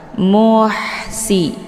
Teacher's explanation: Ha ini adalah salah satu daripada sifat Hamas jadi ada desis angin yang agak samar-samar muhsi jadi jangan dibaca muhsi jangan ditekan tapi dialirkan ha kecil